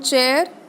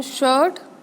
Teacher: Palato alveolar. Over here, passive articulator is teeth ridge and hard palate. And active articulator is tip of the tongue and the blade of the tongue.